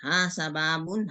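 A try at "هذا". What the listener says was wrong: Bukan hasa, Bu. Haza, Bu. Haza. Hasa. Haza, Bu. Haza.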